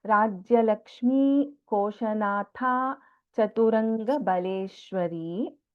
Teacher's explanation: Tha is Mahaprana in Koshanatha.